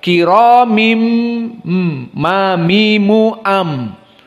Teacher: dijadikanlah iqlab dijadikan nunnya menjadi mim Kenapa dijadikannya iqlab kepada mim dari Nun karena mim makhrajnya sama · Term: iklab